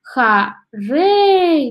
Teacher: Ударение падает на второй слог